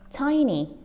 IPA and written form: ˈtaɪni (tiny)